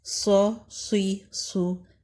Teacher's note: صاد زبر صا، صاد زیر سوئی، صاد پیش سو۔ صاد کو موٹا اور بلند پڑھیں گے اور اس میں موٹی سیٹی ہوگی